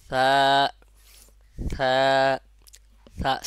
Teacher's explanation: আর এর মাখরাজ হলো জিহ্বার আগা সামনের উপরে দুই দাঁতের আগার সঙ্গে, এক কথায় জিহ্বার আগা আর উপরে যে দুই দাঁত আছে আগার সঙ্গে লাগাইয়া নরমভাবে উচ্চারণ হবে